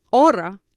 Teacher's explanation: the H is not pronounced in Spanish